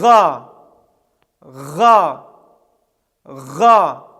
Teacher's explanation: произносится там где соединяется ротовая полость и гортань с участием язычка это звук является щелевым и звонким то есть произнес с участием голоса также это звук является твердым